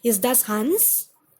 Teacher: all the questions are a yes no question. So the intonation goes up.